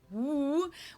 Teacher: the English W sound, the woo, where you really don't even touch anything with your lips or teeth.